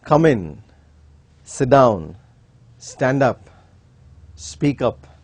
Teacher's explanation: In all these commands, the tune is falling. It is not rising because it is a command.